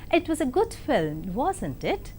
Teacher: rising tone is also used in question tags. When you use a rising tone in a tag question like this, it was a good film, wasn't it?